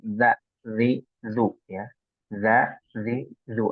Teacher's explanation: agak digigit lidahnya ya di bagian atas gigi seri nih